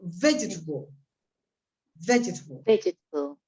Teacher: you say you must stress the first syllable. El acento, la voz se carga en la primera sílaba de la izquierda y al marcar la I, la sílaba del medio desaparece.